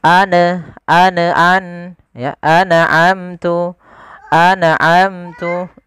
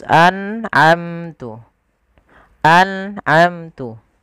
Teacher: ada bacaan izhar halqi yaitu nun sukun bertemu dengan ain. Harus jelas anamtu mim matinya di sini sebenarnya ada izhar syafawi harus jelas juga maka tidak boleh anaamta maaf anaamtu.